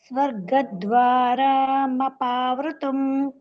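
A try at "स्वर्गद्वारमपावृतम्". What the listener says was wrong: ద్వారా దీర్ఘం తీస్తున్నారు, అక్కడ దీర్ఘం తీయకుండా చెప్పండి. ద్వారా స్వర్గద్వార.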